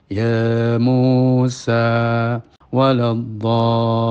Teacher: Atau gampangnya seperti panjangnya orang mengucapkan ya Musa. Ya itu 2 harokat, mu 2 harokat, sa 2 harokat. Maka ya Musa itu 6 harokat. Jadi waladhdallin tidak lebih daripada panjangnya orang mengucapkan ya Musa waladhdallin. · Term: mad lazim